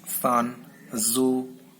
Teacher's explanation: S in son is voiceless alveolar fricative, and Z in zoo is voiced alveolar fricative. S and Z during the articulation, tongue brushes alveolar ridge just behind the teeth.